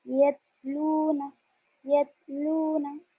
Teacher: ता की आवाज़ बारीक और बगैर झटके वाली होती है